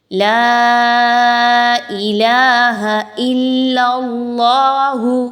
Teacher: اب لام مشدد ہے تو آپ نے حمزہ اور لام کو آپس میں بہت مضبوطی کے ساتھ ملانا ہے، اور پھر نیکسٹ اللہ کا جو حرف آ رہا ہے اس سے پہلے والی لام پر زبر ہے، تو آپ نے اللہ کے حرف کو پر پڑھنا ہے، موٹا پڑھنا ہے، باریک نہیں ہونے دینا